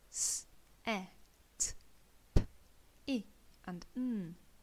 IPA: s.. e.. t.. p.. ɪ.. n